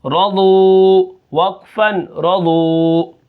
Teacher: را کو موٹا کر کے پڑھیں گے کیونکہ اس کے اوپر زبر ہے. ضاد کو بھی موٹا کریں گے کیونکہ یہ حروف مستعلیہ میں سے ہے · جب آخر میں حرف ساکن ہوتا ہے، کوئی حرف مدہ ہوتا ہے تو مدہ کے اوپر ہی وقف ہوگا. را کو موٹا کر کے پڑھیں گے کیونکہ اس کے اوپر زبر ہے